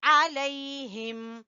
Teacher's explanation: عین کو وسط حلق سے اور یا لین ہے